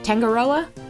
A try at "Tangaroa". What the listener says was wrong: Pronunciation is more like tong. Oh, okay. More like tongoa. No hard g like mango.